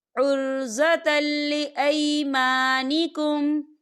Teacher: یا دیکھیں عرضة، تا کے اوپر تنوین ہے اور تنوین کے بعد لام آ رہا ہے، اور لام جو ہے حروف یرملون میں سے ہے، تو یہاں پر ادغام ہوگا اور ہم یہاں غنہ نہیں کریں گے، ہم اسے جلدی سے پڑھیں گے